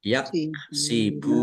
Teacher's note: wawu sukun mat tobi'i panjang dua harokat